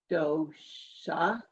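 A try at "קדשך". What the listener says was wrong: No, not do. There's the 2 dots under it. Cha, cha. Final chaf. Kadishacha.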